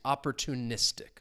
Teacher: So the stress is on that second to last syllable.